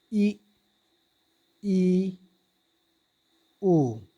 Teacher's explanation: वे स्वर जिनके उच्चारण में मुख बहुत कम खुलता है अर्थात लगभग बंद रहता है उसे समृद्ध स्वर कहते हैं।